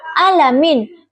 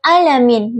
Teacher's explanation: pengucapan ain yang tidak ada getaran tenggorokan sehingga terdengar seperti alamin. Contoh bacaan yang benar itu yaitu alamin dengan ain yang memiliki getaran jelas.